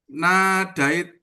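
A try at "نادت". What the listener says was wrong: Nadat. Nadat. Hilang ya-nya. Nadat.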